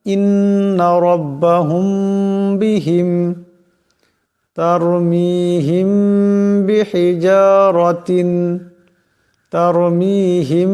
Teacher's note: মিম সাকিনের পর বা আসছে এই মিম সাকিন কে এক আলিফ পরিমাণ গুন্না করিয়া পড়তে হবে এটাই হলো ইকফায়ে শাফি যেমন ইন্নাব্বাহুম বিহিম তারমিহিম হিজারাতিন তারমিহিম এখানে